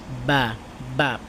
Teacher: বা উচ্চারণ করতে দুই ঠোঁট একসাথে মিলবে ঠিক আছে বাতাসটা বন্ধ হবে